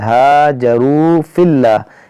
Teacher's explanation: ये वाव मद्दा है, इसको हम खींचेंगे एक अलिफ के बराबर